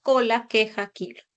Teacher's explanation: la letra c q y K que representan a la oclusiva velar sorda